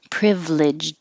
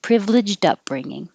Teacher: You kind of hold it in the D position. But if there was a word after it that began with a vowel, like privileged upbringing, then the D would connect and you can hear it.